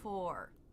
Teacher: The lips will round more than they would if the R wasn't there.